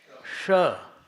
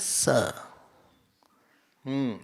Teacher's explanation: और दंतव्य है स। इसको बोलते हैं ऊष्म, ऊष्मांग इसको बोलते हैं, जिसमें कि थोड़ी सी सीटी आए।